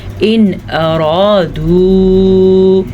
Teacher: ہم نون ساکن کو ظاہر کر کے بغیر غنّے کے پڑھیں گے